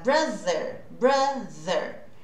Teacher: Eu faço essa língua entre os dentes, as minhas cordas vocais vibram. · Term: TH voiced